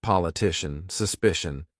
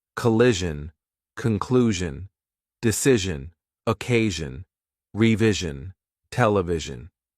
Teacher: the only difference is that one is lighter, the other is heavier using more of the vocal cords. So, zash, jash, jash, jash, you get more vibration in your vocal cords with this one.